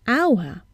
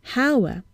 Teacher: We see an H, but we hear a vowel sound at the beginning, hour, and not hour.